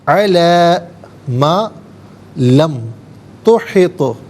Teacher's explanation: وَكَيْفَ تَصْبِرُ عَلَى مَا لَمْ تُحِطْ عَلَى مَا لَمْ تُحِطْ، تو ساکن ہے لیکن حرف قلقلہ ہے تو یہاں آواز لوٹتی ہوئی محسوس ہونی چاہیے